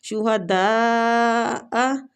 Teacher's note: شہداء دا پہ جو مد ہے یہ مد واجی متصل ہو رہی ہے، مطلب جڑی ہوئی مد، ٹھیک ہے۔